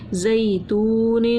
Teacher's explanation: دو زیر کی تنوین غنہ کر کے پڑھا · یا لین نرمی سے پڑھا، واو مدہ ایک الف کے برابر کھینچا